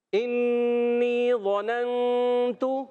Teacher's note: ایک الف کا غنہ کریں گے, نون کو چھپا کر ادا کریں گے, اور تا پر پیش حرکات کو بغیر کھینچے بغیر جھٹکا دی معروف ادا کریں گے. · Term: اخفا کا قاعدہ